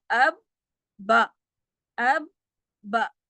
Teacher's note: ٹھیک ہے، دوسرا حرف جو ہے وہ زبر والا ہے تو اب با، اب با۔ چونکہ یہ حرف شد والا ہے تو اس کے پہلے والے حرف کے اوپر ہم قلقلہ نہیں کریں گے، اب با نہیں کریں گے۔